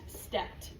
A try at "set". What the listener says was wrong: Yeah, you're adding in an extra T sound.